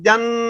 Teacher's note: لیکن جن جب نون پڑھ رہے ہیں مشدد تو وہاں غنہ بھی کر رہے ہیں، ساتھ ساتھ جن نون کو سختی کے ساتھ ادا کر رہے ہیں کہ زبان وہاں ٹکی ہوئی ہے جہاں نون کا مخرج ہے، اگر وہاں زبان ہٹ جائے گی وہ مخرج ختم ہو جائے گا۔